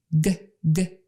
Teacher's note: if you say a g sound GG you can feel your neck vibrate